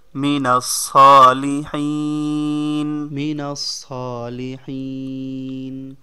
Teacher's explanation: এখানে থামলে সালিহিন হবে, শেষের অক্ষরে জজম হবে।